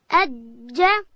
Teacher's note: جیم ادا کیږي د ژبې منځ به لوړ تالو ته ورولو